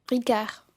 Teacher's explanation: La R se pronuncia, pero la D que viene después no.